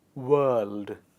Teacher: It is world because letter R is followed by the L sound and we do not pronounce it.